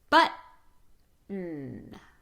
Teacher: When T is part of the word ending ton, stop the T. We already talked about stopping the T, that glottal stop, stopping the air with the bringing the vocal folds or chords together.